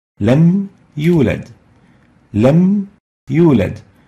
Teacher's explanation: the meme with sukun and the ya with dhamma, both are pronounced with idhar clearly